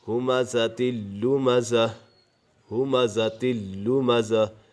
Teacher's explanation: دو آنکھوں والا ہا ہے تو اسے گلے کے آخری حصے سے ادا ہوگا